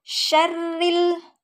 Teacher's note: itu ada Ro berharakat kasrh maka hukum bacaannya adalah ro tarqq karena setiap ro berharakat kasrh maka dibaca tipis